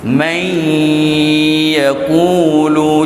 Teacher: May yaqulu, sempurna saya masuk tu. Tetapi idgham ma'al gunnah, dia masuk tidak sempurna. Bagi ya dan waw, dia masuk sipi-sipi dia. May, gunnah tu, may yaqulu, masih ada kewujudan nun.